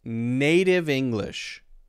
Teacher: We got the D sound instead of the T.